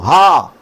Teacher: اس کا مخرج کیا ہے؟ تو حلق کا نیچے والا حصہ